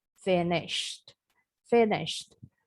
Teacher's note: akhiran ed-nya nggak bunyi ed, jadi bacanya bukan finished, tapi bunyinya seperti huruf T